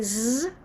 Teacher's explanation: as much is it voice drone voiced it's his voice so the voicing is holding some of the air back but we're using the same part of our mouth